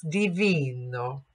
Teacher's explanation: bright E vowel where my cheeks come up toward my eyes.